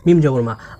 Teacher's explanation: এই মিম তাজদিদকে নাকের মধ্যে গুনগুন করে কমপক্ষে 1 সেকেন্ড বা 1 আলিফ পরিমাণ টেনে পড়ব। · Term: ওয়াজিব গুন্না